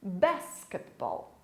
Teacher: Você pode perceber que a sílaba mais forte é no início da palavra, diferente da língua portuguesa.